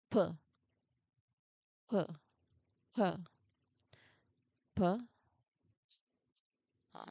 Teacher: It should not, because again, the the p sound is unvoiced. So there should not be any kind of vibration at all.